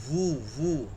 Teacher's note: ঠোঁটের ভিজা জায়গা মানে ভিতর থেকে এই উচ্চারণটা হবে বু, আর এই ঠোঁট দুইটা গোল হয়ে যাবে